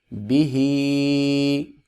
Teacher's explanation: با زیر بی، ہا کھڑی زیر ہی، بی ہی، با کے نیچے زیر ہے، اس کو لمبا نہیں کریں گے، اور زیر حرکات کو کہتے ہیں، حرکات میں سے ہے، حرکات 3 ہیں، زبر، زیر اور پیش، اور ان کو لمبا نہیں کیا جاتا اور نہ ہی جھٹکے سے پڑھا جاتا ہے۔ ہا کے نیچے کھڑی زیر ہے، اور کھڑی زیر کو 1 الف کے برابر ہم لمبا کریں گے